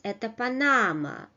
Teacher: we train a falling intonation, which is typical of Russian simple sentences